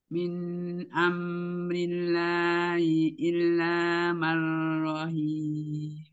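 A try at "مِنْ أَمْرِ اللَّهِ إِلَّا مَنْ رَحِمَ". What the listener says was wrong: Enggak panjang. Marrohim. Marrohim. Nah, hati-hati yang tahkid ya, ya. Jadi yang tahkid itu seperti dua harokat gitu. Tapi enggak terlalu lama ya. Min amrillahi illa marrohim. Marrohim. Marrohim.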